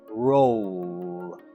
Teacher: the notes say that the l sound is voiced